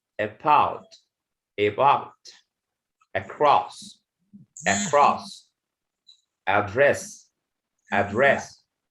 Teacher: word begins with a letter a plus a consonant okay so the a sound or the letter a is pronounced with the schwa sound